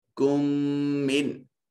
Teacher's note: پہلا میم ساکن دوسرا میم متحرک، تو ساکن میم کو متحرک میم میں شامل کر دیں گے، ادغام شفوی کہلائے گا۔